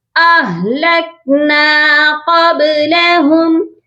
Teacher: اہلکنا، یہاں پر بہت سے لوگ مسٹیک کرتے ہیں آلکنا، ہا کی آواز کو غائب کر دیتے ہیں. حمزہ کو ہا کے ساتھ جب ملائیں گے تو ہا ساکن ہو رہا ہے اور ہا کی آواز بھی کلیئر ہونی چاہیے. اہلکنا قبلہم، با پر قلقلہ کریں گے اور ادھر بھی ہا کو میم کے ساتھ ملائیں گے تو ادغام کریں گے اور وہ بھی غنے کے ساتھ.